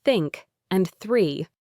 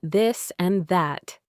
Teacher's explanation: The unvoiced sound as in think and three and the voiced sound as in this and that. For the unvoiced uh in think, you need to place the very tip of your tongue gently between your front teeth and blow air out.